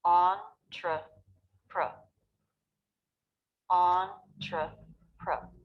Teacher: Notice how my lips and mouth aren't moving too much. These are unstressed syllables, so we want to simplify how we make them.